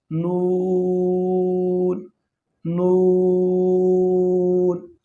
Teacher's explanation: نون کا مخرج ہے زبان کا کنارہ اور انیاب سے ثنایا تک کی دانتوں کی جڑوں سے ادا ہوتا ہے۔ تو ضاحک کے ساتھ منہ کی جانب جو دانت ہے اسے انیاب کہتے ہیں، دونوں سائڈ پہ۔